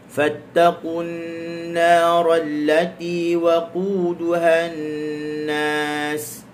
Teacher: Fattaqun nara, fatta hujung lidah digusi. Fat dia pertemuan sempurna, dia sekat suara.